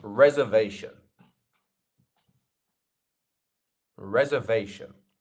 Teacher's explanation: the part that sounds like V is our stress syllable here so Reserve our third syllable I have a reservation not reservation